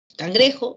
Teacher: Cangrejo es una palabra que recibe el acento en la penúltima sílaba.